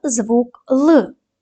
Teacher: звук л приголосний твердий дзвінкий